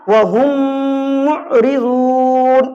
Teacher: میم میں ملا دینا ہے اور گننا کر کے پڑھنا ہے، یعنی وَهُمْ مُعْرِضُونَ اس طریقے سے پڑھیں گے تب جا کر صحیح ہوگا۔ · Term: ادغام شفوی